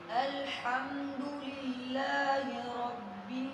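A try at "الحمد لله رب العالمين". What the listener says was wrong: لام کو باؤنس کرنا، اس پہ قلقلہ کرنا نہیں بند ہو رہا، تو آپ ان کے سلیبل بنا لیں، رب اسٹے کر کے عالمین، پھر اس وقفے کو کلوز کرتے جائیں، رب العالمین،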